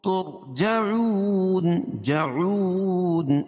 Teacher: تو یہاں پیش ہے تو را پر پڑھی جائے گی یعنی موٹا پڑھیں گے